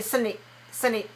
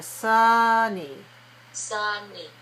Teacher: when you say the word Sunny make the uh longer